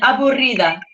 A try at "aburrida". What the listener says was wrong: Get that rolled R in there.